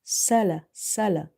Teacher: there will be a whistle like sharp sound when you're saying this letter seen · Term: whistling letters